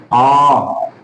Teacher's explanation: ह्रस्व स्वर की अपेक्षा दुगना समय लगा, इस कारण से इसे दीर्घ स्वर कहा जाएगा